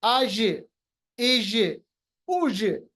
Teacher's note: जब ये जीम साकिन हो इस पे कलकला, कलकला का मतलब रिबाउंड करना, आवाज को वापस लाना।